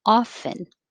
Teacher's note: the majority of mainstream american english speakers don't pronounce the t